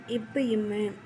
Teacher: மேல் இதழும் கீழ் இதழும் பொருந்துவதால் பிறப்பது